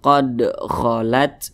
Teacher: ada huruf Dal dia sukun nah Berarti cara bacanya itu di pantulkan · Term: qolqalah sugro, qalqalah sugro